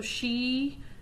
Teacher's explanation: the whole tongue kind of hits the roof the pallet · you can feel that the air flows through the the small space that's left uh on the palette